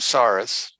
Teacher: I use the S sound as opposed to the T sound. I'm doing Sephardic as opposed to Ashkenazic.